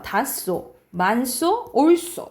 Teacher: 히읗 뒤에 시옷이 결합되는 경우에는 된 소리가 납니다. 그래서 히읗이 탈락되면서 다소, 만소, 옳소 이렇게 발음이 나는 거고요.